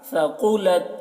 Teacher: ثقلت ثا ہے تو ثقلت بولیں گے، ثقلت نہیں بولیں گے، سین نہیں بنائیں گے، اس کو ثا پڑھیں گے